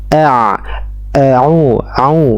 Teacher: huruf Ain ini keluar dari tenggorokan bagian tengah